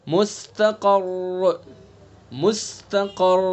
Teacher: تو جب ساکن اس کو وقف کر دیں گے تبھی یہ ساکن بنے گا. اور پھر اس مشدد ساکن سے پہلے قاف کے اوپر زبر ہے تو اس لیے اس را کو پر پڑھیں گے